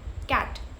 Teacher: It's t sound at the end. We are not using our vocal cords. We are only using our mouth. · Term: voiceless sound